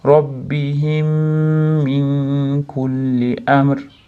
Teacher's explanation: min kullida nun kafga yo'liqqanligi uchun ixfo bo'lyapti